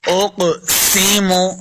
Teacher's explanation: قاف کو موٹا پڑھنا ہے قاف حروف مستعلیہ سے اور قلقلہ میں سے بھی ہے تو اس کو خوب واضح کریں گے